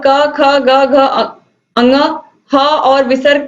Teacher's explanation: तो अकुह विसर्जनीय नाम कंठ, यानी कि अ आ क वर्ग में और ह और विसर्ग, इनका उच्चारण स्थान क्या होता है, कंठ होता है